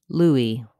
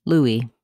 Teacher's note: In English, this name is pronounced LOO-ee with first syllable stress. The S is silent, LOO-ee.